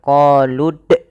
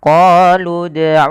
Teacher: dia memantulkan tanpa ada huruf hamzahnya. Maka qolud qoludulana bukan qolud tapi qoludulana. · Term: qalqalah